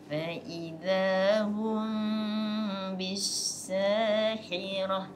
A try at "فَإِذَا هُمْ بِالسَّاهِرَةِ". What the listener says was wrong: Takut jadi ha pula yang tu. Sahar, jaga malam kan.